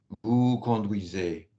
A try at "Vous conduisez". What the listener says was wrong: No, don't jump. Remember, you was told to slide from vowel to vowel. Vous conduisez. Don't jump in the larynx. Slide from vowel to vowel. Vous conduisez. And you achieve that by a small set of C's, a small set of consonants. And you need to work on that. Yes, smaller consonants.